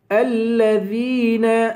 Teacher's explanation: الذین، ذال کو یا سے ملائیں گے، یا ایک الف کے برابر، یا کو ایک الف کے برابر کھینچ کر پڑھیں گے